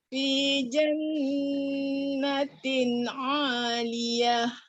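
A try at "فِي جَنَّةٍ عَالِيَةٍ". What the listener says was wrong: Jangan bunyi o. Fi jannatin 'aliyah.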